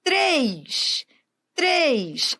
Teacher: o timbre é fechado mas ele é tônico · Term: monossílabo tônico